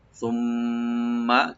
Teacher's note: মিম double করে আমরা পড়বো, মুসাদ্দাদ গুণা হবে এখানে